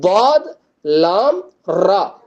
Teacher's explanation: இது மூணுமே வந்துட்டு நாக்கினுடைய ஓரங்கள்ல இருந்து உச்சரிக்கக்கூடிய எழுத்துக்கள்